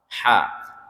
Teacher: Huruf ha itu letaknya di adnal halqi, di pertengah-tengah tenggorokan. Ha. Nah, kalau kita nyebut ha itu jakun kita naik.